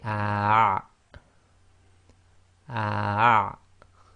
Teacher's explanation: So that'll give you the ayn. So you're blocking the middle of your throat when you say the ah